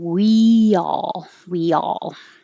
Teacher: there's like an invisible y when you move from the high position